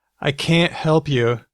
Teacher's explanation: can is just can it's not stressed but can't can't is stressed so you say I can't help you it gets the stress